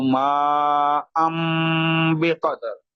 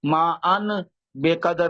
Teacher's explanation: تو یہ ما ان تھا، ان حمزہ پہ دو زبر تھے، اور جب اس کے ساتھ تنوین کے بعد با آ جائے تو پھر میم کی آواز آتی ہے